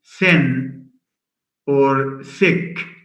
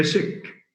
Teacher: In some in some Jordanian dialects, instead of saying thin or thick, they tend to say sick.